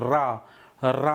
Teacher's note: लुंठित का मतलब जिसमें जीभ लपिट जाए, ऐसे लग रहा है कि जैसे जीभ को लपेट के बोल रहे हैं। रा, रा ऊपर घूम करके और लपिट करके चले, इसलिए इसे लुंठित कहते हैं।